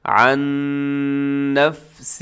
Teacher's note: نون ساکن کے بعد پھر نون یرملون کا یہاں ادغام ہو رہا ہے غنے کے ساتھ